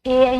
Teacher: ए ऐ की बात करें तो कंठ और तालु दोनों से बोली जाती है